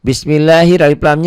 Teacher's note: alif lam samsiah, alif lam tidak dibaca